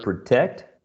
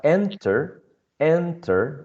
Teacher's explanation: you have the verb protect a two syllable verb which is stressed on the second syllable and we have enter enter which is also a two syllable verb but stressed in the first syllable